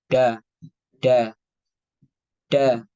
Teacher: mengeluarkan nafas untuk makhraj Dal terlalu mundur dari gigi depan maksudnya ujung lidahnya itu terlalu mundur seperti Huruf d-nya orang Indonesia